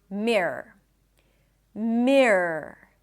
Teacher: R. And when you say it quickly, the entire word it just sounds like a long r